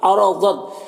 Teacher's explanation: را کو پر زبر را کو پر پڑھیں گے، ضاد حروف مستعلیہ میں سے پر پڑھیں گے. اور یہاں پر بھی الف لام حروف شمسی کے شروع میں ہے، دال حروف شمسی میں سے ہے تو الف لام دونوں کو نہیں پڑھیں گے.